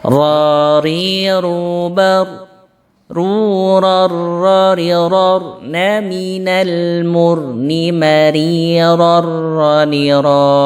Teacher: agak bergetar ujung lidah kita ketika membaca huruf ra ini